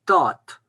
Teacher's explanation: Le A est long devant un D, donc c'est la 2e règle, c'est la longueur de la voyelle. Et le D final se prononce T, tat.